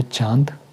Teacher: वे स्वर जिनका उच्चारण करते समय ध्वनि मुख के साथ-साथ नाक से भी निकलती है। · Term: अनुनासिक स्वर